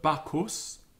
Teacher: it's quite a clear articulation of the H after the consonant